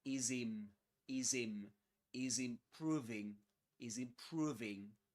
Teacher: Is improving is the final Z at the end of is connects with the initial vowel sound in the next word improving